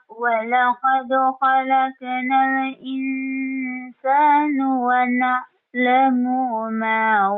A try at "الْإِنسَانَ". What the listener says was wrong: Tingnan mo yung bawin ng nun. Yung bawin niya ay fatha kaya na. Insana, hindi insano. itong bigkas mo na wana alamu ay palitan mo ng wana alamu ma. Alisin mo yung wana alamu kasi walang mad dito. Huwag mong sabihin na mo kasi walang mad dito. Palitan mo ng wana alamu ma.